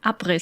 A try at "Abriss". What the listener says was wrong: Well, it's like up, and then a slight pause, riss. Like it's not Briss, it's up, riss. Like there's just a little break in there.